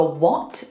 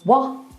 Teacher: So it's completely changed the word. It's no longer what, it's wah. There's no T. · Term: glottal stops